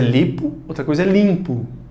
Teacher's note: Esse M só está nasalizando a vogal anterior, que é o I. Tanto que se você não nasalizar esse I, fica a palavra lipo.